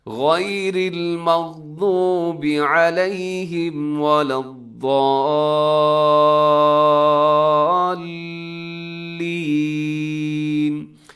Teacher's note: اپنے ضاد کو آگے لام کے ساتھ ضرور ملانا ہے، کیونکہ لام کے اوپر آپ کو تشدید بھی نظر آ رہی ہے، تو آپ نے ایسے ملانا ہے کہ اپنے ایک سیکنڈ کے لیے رکنا بھی ہے اس کے اوپر، تاکہ یہ پتہ چل جائے کہ آپ نے جزم پر نہیں آپ نے ملایا، بلکہ آپ نے تشدید کے ذریعے سے اگلے لفظ کے ساتھ ملایا ہے، حرف کے ساتھ۔